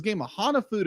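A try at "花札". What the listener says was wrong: You said Hanafudu. Hana. Ha. Na. Fu. Foo. No, it's Hanafuda.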